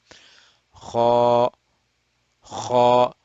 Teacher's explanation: We are just continuing the roundedness or the heaviness of Kha, and we stretch it for 2 beats. 2 beats. 2 harakat. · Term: Alif Mad